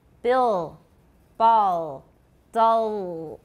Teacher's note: An L that occurs after a vowel is a velarized L. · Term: dark L